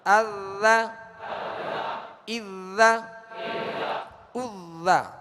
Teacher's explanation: ذال کی خوب مشق کیجیے، اذا، تھوڑا توجہ کے ساتھ، تاکہ اس کے اندر سیٹی کی آواز ازا یہ نہ ہو، کیونکہ ہم نے زا اور ذال میں فرق کرنا ہے، تو زا کو سیٹی کی آواز میں سختی سے پڑھنا یہ اس کی خوبی ہے۔